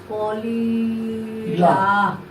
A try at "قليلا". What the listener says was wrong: হ্যাঁ একটু লামটা একটু লম্বা হবে। কলিলা। আবার বলো।